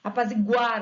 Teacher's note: Apaziguar, ó, a sílaba tônica recai no GU, que faz parte do radical, o ar é desinência.